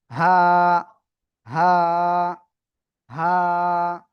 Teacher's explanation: গলার শুরু থেকে এই অক্ষরটা উচ্চারণ করে পড়তে হবে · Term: হা অক্ষরটা